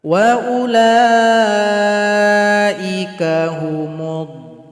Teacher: berarti dhad panjangkan dulu 6 ketukan.